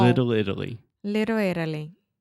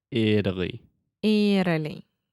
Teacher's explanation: And then also that is what we call a flap T. So I'm not really articulating that T sound.